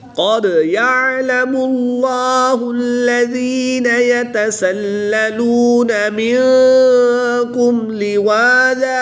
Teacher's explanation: دو زبر کی تنوین کو وقف کی حالت میں الف مدہ سے تبدیل کر کے پڑھیں گے